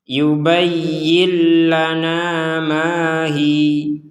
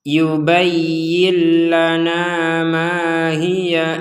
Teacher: Di sini juga tadi kita membacanya mahi. Mahi di sini untuk huruf ha-nya kita memanjangkan 2 harokat karena kita berhenti. Mahiyya, asal katanya adalah hiya, kemudian kita membacanya hi. · Kalau kita lanjut, tidak ada panjang sama sekali. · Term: Panjang 2 harokat